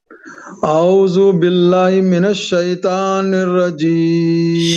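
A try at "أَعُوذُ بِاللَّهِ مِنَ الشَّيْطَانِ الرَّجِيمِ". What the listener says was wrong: शैतान नहीं बोलेंगे, शैतानिर रजीम, मोटा कीजिए।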